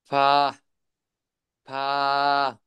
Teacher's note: 14 নম্বর মাখরাজ, নিচের ঠোঁটের পেট সামনের উপরের দুই দাঁতের আগার সঙ্গে লাগাইয়া